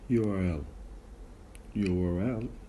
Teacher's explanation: You can identify there is a W sound in between the U and A.